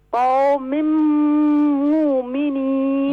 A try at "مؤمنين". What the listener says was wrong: مومنین نہیں ہے، مؤمنین.